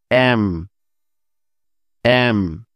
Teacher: দুই ঠোঁট বন্ধ করে উচ্চারণ করতে হয়